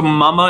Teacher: eyes or oh so mama is nasalized because the the M you divert some of the air flow through your nose